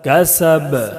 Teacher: وما کسب، کسبا ہے، لیکن وقف کرنے کی وجہ سے، آیت ہونے کی وجہ سے با کو جزم دے کر پڑھیں گے۔ کسب، اور جزم ہونے کی وجہ سے با میں قلقلہ ہوگا